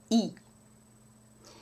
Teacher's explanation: in French you have no movement you have just tension